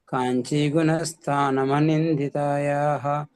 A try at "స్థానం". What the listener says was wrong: స్థా వత్తాలి. స్థానం